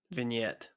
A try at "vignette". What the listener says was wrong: No, it's a vignette. T silent.